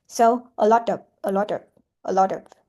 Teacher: So we pronounce the T like a d quick a quick d. · So if final comes after a vowel and before another vowel, the t is flat. Pronounce the t like a quick d.